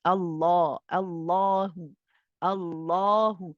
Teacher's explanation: the back of the tongue is slightly raised there is an elevation in the sound the sound is directed behind the upper two in sizes so · you're kind of pointing your sound upwards behind the upper two incisors when you pronounce this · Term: the lamb is heavy, heavy